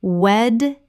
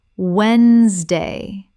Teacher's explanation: The middle syllable is completely silent in natural speech.